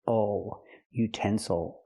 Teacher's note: word with three syllables we stress the second syllable utensils again the third syllable is not stressed so we cannot say ill we have to say o